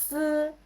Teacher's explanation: S is also dental but the only difference is it's fricative. So you will not touch the teeth.